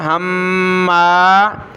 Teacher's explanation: ہا کو میم کے ساتھ ملایا، میم پر غنہ ہوگا، ہما، پھر زا کو میم کے ساتھ، زم، میم کو شین کے ساتھ، مشا، شین کو سخت کیا اور مد کی وجہ سے کھینچا، مشا، حمزہ کو ملایا چھوٹی میم کے ساتھ، ام بنمیم، ہمازم مشاء بنمیم، نون پہلے میم بعد میں، بنمیم۔